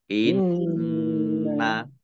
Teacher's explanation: nun tasdid ya, dibaca gunnah atau mendengung, ditahan 2 harokat.